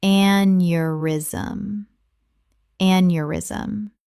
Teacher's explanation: Three syllables. The e u makes a yuh sound.